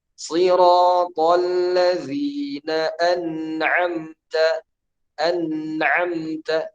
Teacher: An'amta harus dijelaskan nunnya, tapi tetap kita berikan dengung walaupun tidak seperti idgham. Kenapa? Karena dia izhar hukumnya.